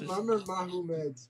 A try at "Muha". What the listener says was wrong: Muha. because the fucking you put the syllables in the wrong spot because you're dyslexic.